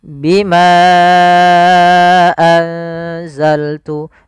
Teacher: maka Bimanya kita panjangkan sepanjang empat harakat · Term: Mad Jaiz munfasil